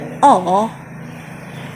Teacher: bibir kita membulat, dan itu disebut dengan rounded